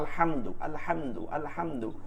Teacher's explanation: আলহামদু এটা হচ্ছে ইজহার, হাম গুণা করা যাবে না